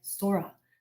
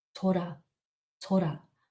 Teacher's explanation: with a soft s and a gently rolled R